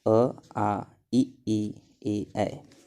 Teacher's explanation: वे स्वर जिनके उच्चारण करते समय ओष्ठ का आकार गोल न होकर ऊपर नीचे फैल जाता है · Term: अवृत्ताकार स्वर